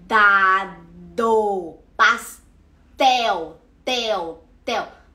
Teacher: a gente faz o D e o T, os sons de D e T, no dente, que é o que a gente chama de dental. Então você vai falar dado, pastel, tel, tel, com T, você vai sentir a língua nos dentes, você vai até sentir o reguinho do dente na língua.